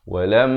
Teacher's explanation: pastikan kita berikan dengung pada mim yang bertanda sabdu. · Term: wajibul gunnah